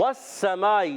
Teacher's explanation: होंठों की गोलाई से। वस्समाई, सीन मुशद्दद, जरा रुक कर अदा करेंगे